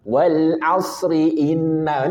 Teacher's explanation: Wal asri inna itu selamat karena tetap dia dibaca tipis karena dia kasrah